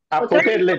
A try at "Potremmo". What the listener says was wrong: Potremmo, c'è una M davanti.